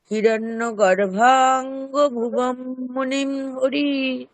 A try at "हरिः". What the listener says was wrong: শেষের বিসর্গ উচ্চারিত হয়নি। শেষের বিসর্গটা উচ্চারণ করা হয়নি, হরিহি।